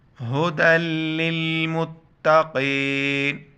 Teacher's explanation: قاف کو گلے سے ادا کرنا ہے، موٹا پڑھنا ہے اس کو